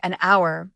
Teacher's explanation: we say an hour because the H is silent, making the word start with a vowel sound